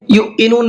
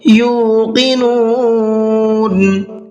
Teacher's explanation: یو کو میں نے کھینچ کر کے پڑھا ہے اس لیے کہ یہاں پر واو مدہ ہے۔ یوقنون جھٹکے کے ساتھ میں نہیں پڑھنا ہے، اکثر غلطی کرتے ہیں یہ، اس لیے بتا رہا ہوں یہ پوائنٹ آپ کو۔